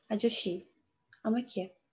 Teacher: mana I harfimizdan oldin kelyapti S harfimiz. Bu yerda sh deb talaffuz qilamiz.